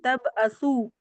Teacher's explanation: تا کو تا جو باریک پڑی جاتی ہے, تا اور با کو ملائیں گے جزم دے کر